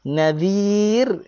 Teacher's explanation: Waqaf nadhir. Zal keluar lidah. Ra baca dengan nipis.